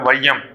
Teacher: தன்னுடைய ஐகார எழுத்துக்கள் ரெண்டு மாத்திரையிலிருந்து குறைந்து ஒலிக்கிறது தான் ஐகார குறுக்கம்